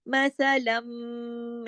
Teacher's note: मसलम, ये जो की आवाज है ये गुन्ना है। मसलम, ये अकमल गुन्ना कहलाएगा, बड़ा गुन्ना होगा, यहाँ के दो मीम है ना। मसलम मा, माँ को क्यों खींचा, अलिफ मद्दा है ना साथ में, अलिफ मद्दा इसको कहते हैं अलिफ, जो खाली होता है ना मीम की आवाज को बढ़ाने के लिए, दो हरकत खींचने के लिए, माँ इस तरह करने के लिए, इसको कहते हैं अलिफ।